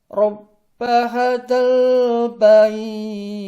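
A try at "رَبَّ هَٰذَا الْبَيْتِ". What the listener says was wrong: Nah, 2 harokat. Lebih diayun lagi. Coba diulang. Rabb hadzal bait. Rabb hadzal bait. Haknya diayun.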